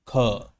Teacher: ध्यान से ख बोलिए और बाद में आपको अ की आवाज जो है अ की ध्वनि जो है वो प्रतीत होगी। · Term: अ ध्वनि अंतर्निहित